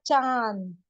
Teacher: न का साउंड हमारे नाक में गुम हो गया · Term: नून गुना